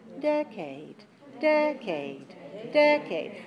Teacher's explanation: the sound a a is a clear vowel but it's unstressed it's lower · So this word has 1 clear stressed vowel and 1 clear unstressed vowel, but no unclear vowels, no reduced vowels. There's no schwa vowel, no in this word.